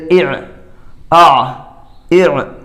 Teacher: حمزہ اور عین دونوں الگ الگ ہیں، مخرج کے تھوڑا تھوڑا قریب ہیں · کہ پہلے عین ہے یا حمزہ ہے۔ تو پہلے حمزہ ہے، حمزہ نکلتا ہے سینے کی طرف سے ، تو سینے کی طرف سے اوپر کو ہم نکالیں حمزہ